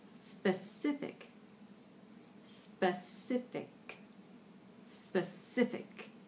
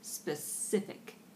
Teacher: Specific. Again, that's that neutral vowel on the first syllable. Just a throwaway kind of vowel. Specific, because you're going to the I sound.